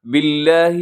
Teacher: بما اشرکوا باللہ، ہاں بما کے اوپر جو مد ہے 3 سے 4 سیکنڈ تک اسے لمبا کیجیے گا۔ باللہ، لفظ اللہ کو باریک رکھیے گا کیونکہ با کے نیچے زیر ہے۔ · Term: مد جائز